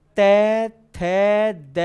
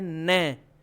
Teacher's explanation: आप गौर करना तै थै ध में जीभ पूरी की पूरी दांतों से टकराएगी। लेकिन जैसे ही न बोलने जाओगे ना तो जीभ ऑटोमेटिकली दांतों से थोड़ी सी ऊपर मसूड़ों वाली जॉइंट रेखा पर टकराएगी। · तय थ द ध में सटीक पूरी जीभ आगे से दांतों से चिपक रही है, लेकिन न में न चाहते हुए भी दांतों से थोड़ी ऊपर मसूड़ों वाली जॉइंट रेखा पे टकरा गई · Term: वृत् वर्ण